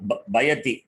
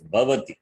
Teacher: And what is the Ucharana Sthanam of Vakara? Labial plus dental.